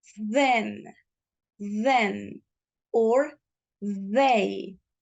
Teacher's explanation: pronounced similar to a D in Spanish, but it is going to have a flow of air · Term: TH sound